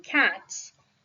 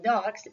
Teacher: In cats, it sounds like S. In dogs, it sounds like Z.